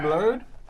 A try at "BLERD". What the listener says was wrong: You're saying it right, but there's a softness to it. I need it to be...